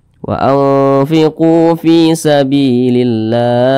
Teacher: huruf lamnya itu dia tidak dibaca langsung masuk ke huruf yang di depannya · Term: idgham syamsiah